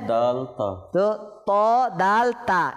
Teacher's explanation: এই তিনটা হরফের মাখরাজ হচ্ছে জিহ্বার আগা এবং সামনের উপরের দাঁতের গোড়া